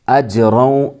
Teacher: اجروں، جیم میں یہاں پر قلقلہ ہوگا، روں میں ادغام ناقص ہوگا، یہاں پر یومن میں سے، تنوین کے بعد یومن میں سے یعنی یا واو میم نون میں سے واو آیا ہے، اس لیے یہاں پر ادغام ناقص یا ادغام مع الغنہ، غنہ بھی ہوگا اس میں، تنوین کی آواز کو واو میں ملائیں گے، غنہ کے ساتھ پڑھیں گے